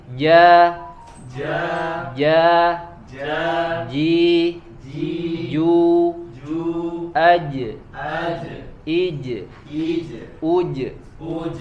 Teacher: menempelkan bagian tengah lidah kita ke langit-langit bagian atas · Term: huruf jim